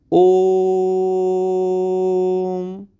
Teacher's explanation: ओ को तीन मात्रा काल तक हमें उच्चारित करना है · जो ओकार है उसका उच्चारण सर्वत्र प्लुति ही होता है। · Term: प्लुत स्वर